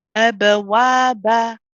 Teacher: a little bit vertical open, the jaw coming a bit down, the tongue being flat for the ba at the end